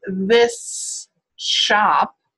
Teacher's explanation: I have to slow it down and say very carefully to make sure that I say an S and then a sh most people are going to say the shop or the should